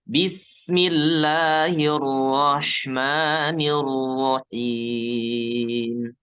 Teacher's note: alirkan Sin alirkan suara Sin bis dan tentu naikkan sifat saofir ya sifat assofir tajam suaranya